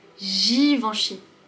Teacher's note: Le G ici, il est suivi par un I, une voyelle. Donc ce n'est pas le son G, c'est le son je.